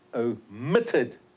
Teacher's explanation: stress is on the final syllable